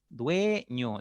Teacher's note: Esa es la segunda regla, no se olviden, que puede aparecer también una débil, perdón, una cerrada con una abierta. Entonces, fíjense por qué la E es abierta, porque cuando tú pronuncias, tus labios se abren un poquito. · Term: vocal abierta